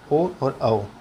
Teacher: कंठ और होंठ से उच्चारित वर्ण है ओ और औ